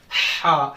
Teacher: حلق سے، درمیانی حلق سے ہا پڑھیں گے